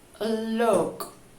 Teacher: Este tercer símbolo nos indicará que la U suena muy similar al sonido inmediatamente anterior, solo que no habrá necesidad de poner la boca en posición de silbido y tampoco será necesario hacer la U tan larga, será una U corta.